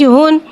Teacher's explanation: हा के पर 2 पेश है, 2 पेश को होठों की गुलाई के साथ अदा करके पढ़ेंगे।